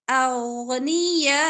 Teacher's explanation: حمزہ پہ جب وقف کریں گے تو حمزہ کی پیش نہیں پڑیں گے حمزہ کو ساکن کریں گے جٹکے کے ساتھ